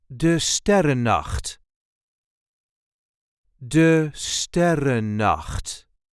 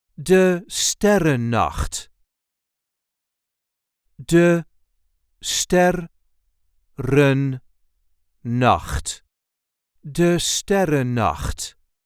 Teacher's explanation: There is a light emphasis on the first syllable of the second word.